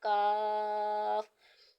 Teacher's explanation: का कायदा हो रहा है और यह जबान की जर और तालू के सख्त हिस्से से अदा होगा · یہ زبان کی جڑ اور تالو کے سخت حصے سے ادا ہوگا